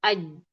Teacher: Jim makhrajnya tengah lidah. Tengah lidah ke langit mulut. Dia menempel aj menempel dia jadi rapat, dia jadi kuat. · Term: syiddah